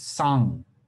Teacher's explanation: it has a non-palatal initial whereas all the other burmese languages have a palatal initial for for this and also uh its final agrees with tibetan